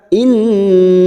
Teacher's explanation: Nun yang bertasdid gunna musaddadah kita tahan selama tiga harakat